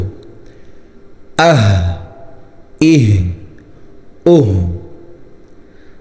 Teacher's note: یہ ہا جو ہے وہ نارمل ہا کی طرح نکالتے ہیں، اس کو حلق سے نہیں نکالنا، ٹھیک ہے۔ یہ والی ہا دو چشم ہا۔